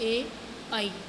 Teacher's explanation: ऊ, पै, फै, बै, भै, मैं होठों से बोले जाते हैं इन वर्णों को। और कंठ तालव्य यानी कंठ और तालु, यानी ये कंठ जो अपने होता है यानी गले का, और ऊपर तालु से दोनों को मिला के बोले जाते हैं